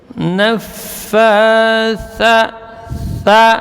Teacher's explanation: Tha huruf hamas dan rakhawah, ujung lidah di ujung gigi seri atas. Tha dia mengalir udara dan suara namun tidak boleh berdesis. Nafatha tha gitu ya, tidak boleh berdesis ya.